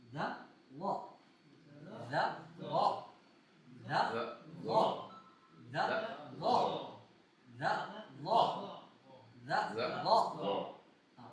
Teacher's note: ہونٹوں کو گول نہیں کرنا. ہونٹوں کا جب گول کرتے ہیں نا, تو یہ ضاد کی طرح ہو جاتا ہے, صاد زادی اس کی طرح ہو جاتی ہے.